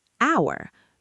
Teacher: H O U R. It starts with the letter H, which is a consonant, but the H is silent.